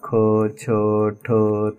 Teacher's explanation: दुसरे व्यंजन आणि चौथे व्यंजन हे महाप्राण व्यंजन आहे किंवा कारण त्यांचा उच्चार करत असताना शेवटी ह ची छटा मिळते आपल्याला म्हणून यांना महाप्राण व्यंजन अस म्हणतात